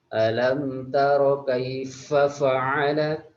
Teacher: Jadi ketika mengucapkan tidak boleh fa fa karena makhrajnya fa itu berada di perut bibir, bukan bibir tapi perut bibir.